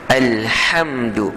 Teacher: Ha yang macam jim tu juga keluar daripada tengah halqum. Ha kena sempitkan sedikit halqum kita akan rasa. Kalau kita sebut biasa ha yang keluar daripada bawah yang dekat dengan dada tu akan jadi ha lain, berubah maknanya.